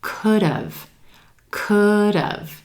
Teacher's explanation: Could have becomes could've, could've. It sounds like two syllables. Emphasis on that first syllable